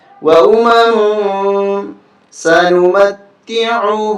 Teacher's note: یہاں اخفا ہوگا، ناک میں آواز چھپائیں گے